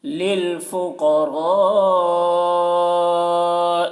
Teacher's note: للفقراء، قاف کو پر پڑھیں گے کیونکہ قاف حروف مستعلیہ میں سے ہے، را کو بھی پر پڑھیں گے کیونکہ را کے اوپر زبر ہے، اور یہاں پر مد متصل ہے کیونکہ حرف مد کے بعد حمزہ اسی کلمہ میں ہے تو مد متصل ہے۔ مد متصل کو 3 یا 4 الف کے برابر کھینچ کر پڑھیں گے